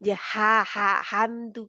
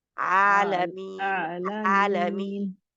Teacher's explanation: हा के लिए हवा बाहर निकलती है और आयन की वही रहती है दबाव उधर ही रहता है